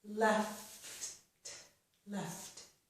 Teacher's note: We have the two letters F and T, and we move right from F to the T sound. There's no extra vowel sound between those.